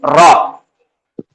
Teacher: ये भी जुबान की नोक के जरिए से अदा होता दांतों की जड़ के ऊपर वाले हिस्से में लगता है · یہ بھی زبان کی نوک کے ذریعے سے ادا ہوتا, دانتوں کی جڑ کے اوپر والے حصے میں لگتا زبان کی نوک